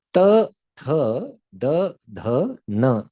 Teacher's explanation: Ta, tha, da, dha, na is dental, danta.